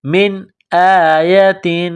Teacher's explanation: نون ساکن کے بعد حمزہ ہے، حروف حلقی ہے تو نون ساکن پر غنہ نہیں کریں گے، آواز ناک میں نہیں چھپائیں گے